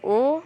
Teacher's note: vokal belakang atas bundar